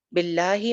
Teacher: बिल्लाहि में हम लफ्ज़ जलाला को मोटा नहीं कर रहे क्योंकि पीछे ज़ेर है।